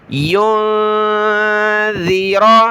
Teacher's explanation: نون ساکن پر ہم نے اخفا کرنا ہے، ناک میں آواز چھپائیں گے